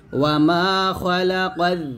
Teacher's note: ওয়ামা খালাকায যাকার, ওয়ামা খালা, খ খ জবর খ, এখানে খা বলা যাবে না, খ মোটা করতে হবে